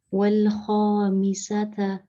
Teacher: The kha is from the upper part of the throat.